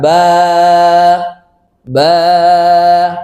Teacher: Maka ketika kita panjangkan ba ini, maka pita suaranya bergetar, bergoncang. Kalau nggak bergoncang nggak bisa, ya.